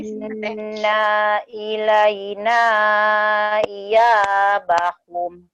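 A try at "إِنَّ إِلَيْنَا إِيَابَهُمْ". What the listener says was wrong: Ulangin, naknya pendek coba teh.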